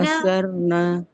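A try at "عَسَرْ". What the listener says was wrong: ठीक है। रॉ थोड़ा और मोटा करें, जैसे भी किया था वैसे ही करें।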